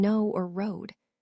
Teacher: starts with a schwa and moves into a long O sound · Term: diphthong